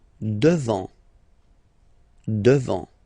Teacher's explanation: Final T not pronounced.